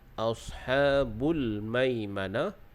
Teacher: huruf sad seperti biasalah kita tebalkan dan bagi dia berangin sedikit